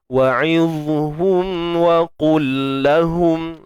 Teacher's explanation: Dan yang paling penting sekali adalah kita mesti tebalkan huruf dha ini. Kemudian mim mati jumpa waw izhar syafawi, jelaskan mim